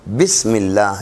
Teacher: بسم اللہ، یہ حمزہ وصلی ہے، اس حمزہ کا نام حمزہ وصلی ہے، نہ لکھا جا رہا ہے نہ پڑھا جا رہا ہے. اللہ کا حمزہ بسم اللہ میں لکھت میں آ رہا ہے، پڑھت میں نہیں آ رہا